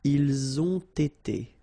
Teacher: You get first the liaison z and then you get the t.